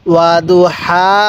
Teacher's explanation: ওয়া দু হা জবর হা আলিফ জবর হা তাহলে ওয়াদু হা এই প্রথম হা টা উচ্চারণের সময় মুখ দিয়ে বাতাস বের করব আর দ্বিতীয় হা টা উচ্চারণের সময় মুখ দিয়ে আওয়াজ করব